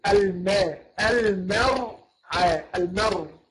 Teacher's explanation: المرعى، ما نقولش المرعى، ما نخليش الميم مفخمه ولا العين مفخمة، لا، نقول الماء، نرقق الميم ونرقق أيضا العين. أما الراء هي اللي تفخم